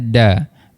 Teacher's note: Cara bacaannya dal baris atas da dan dibaca dengan kadar dua harakat. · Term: mad iwat